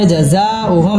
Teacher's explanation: মিম সাকিন ইজহারে খাস গুন্না ছাড়া পড়তে হবে